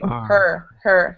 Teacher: you're making almost a little bit of an o sound with your vowel and it should be more like er like you're angry her her um and maybe we'll go back